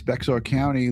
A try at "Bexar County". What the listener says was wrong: Bear County. You don't pronounce X in Spanish.